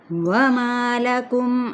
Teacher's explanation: واو ہونٹوں کی نا تمام گولائی کے ساتھ